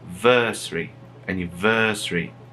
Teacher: mas o acento moral, ele tá no versary, anniversary